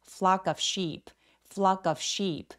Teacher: flock의 크 소리가 그 뒤에 모음과 연음된 때에는 flock of라고 of처럼 가볍게 처리해 주세요.